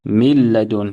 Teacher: We will make idgham, we will merge the noon sakina into the lam without ghunnah, without any nasal sound.